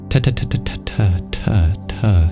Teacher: D sound it might especially when it's sandwiched between two vowels it's hard to turn off the voice for that Dental t t sound but it is truly a t sound